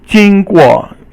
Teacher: 经 过 is first tone and then fourth tone